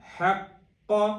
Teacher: قاف موٹے والا ہے، اس کے اوپر تشدید ہے، اس کے اوپر تشدید کو بھی واضح کرنا ہے، حق، اور قاف کو موٹا کرنا ہے۔